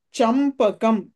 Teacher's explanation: చంపకంలో కూడా అనుస్వారం తర్వాత ప వచ్చింది కాబట్టి అనుస్వర స్థానంలో మకారం వస్తుంది